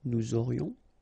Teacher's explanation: final S not pronounced, and then you get this liaison